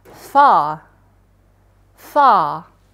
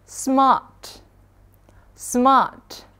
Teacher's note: Jadi A-nya dibaca panjang aja, tanpa ada bunyi R.